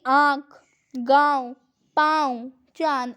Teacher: इसके उच्चारण के नाक और मुंह दोनों से ही ध्वनि निकलती है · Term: अनुनासिक